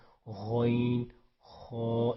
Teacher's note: یہ غین خا گلے کے شروع سے ادا ہوتے ہیں, تو آپ نے ادھر غین خا, اس کو تھوڑا موٹا بھی کرتے ہیں, ٹھیک ہے.